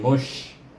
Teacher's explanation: mu dimatikan dengan huruf shin mush, berangin hamas mush. Kemudian ra baris di bawah baca dengan nipis ri, mush ri.